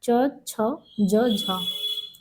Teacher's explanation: स्पर्श का समय अपेक्षाकृत ज्यादा लगता है, उच्चारण के बाद आने वाले भाग संघर्षी होते हैं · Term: स्पर्श संघर्षी व्यंजन